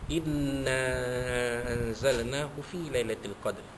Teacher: anzalna nun mati jumpa dengan zai, ya, huruf zai iaitu ikhfa hakiki, ya, dibaca dengung